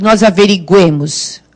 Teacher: Agora o U foi pronunciado, mas ele ficou fraquinho porque a força está no E.